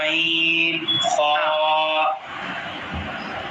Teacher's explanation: غین اور خا کا مخرج حلق کے اوپر والے حصے سے ادا ہوتے ہیں